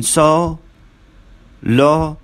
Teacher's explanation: The lips are apart. They are very slightly rounded. Oval shape. They are oval in shape.